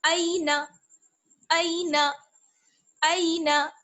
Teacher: اگر ایسے پڑھ دیں اینا تب بھی یہ غلط ہو جائے گا. نہ ہمیں ای کو کھینچنا ہے اور نہ ہمیں نا کو کھینچنا ہے. دونوں کو جلدی سے پڑھیں گے.